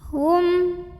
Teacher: syafawi karena ada mim sukun yang ketemu sama huruf a maka mim sukun ini dibunyikan dengan jelas bunyi am dan tidak ditahan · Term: izhar syafawi